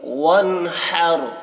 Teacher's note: نون میں اظہار ہوگا، نون کو جلدی پڑھیں گے۔ وَانْحَرْ، ہا کو حلق سے ادا کریں گے، رو کو پور پڑھیں گے۔